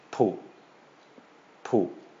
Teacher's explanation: high-class consonant, short vowel, short low tone.